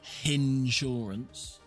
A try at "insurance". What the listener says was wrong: you said it like hen shance you said it with a h